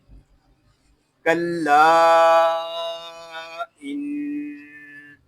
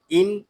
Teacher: نون مشدد میں غنہ ہو رہا ہے اور نون مشدد میں ہمیشہ غنہ ہوتا ہے